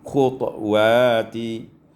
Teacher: iskanu ta ma'al qalqalah diiskankan disukunkan ta dengan qalqalah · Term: iskanalqalqalah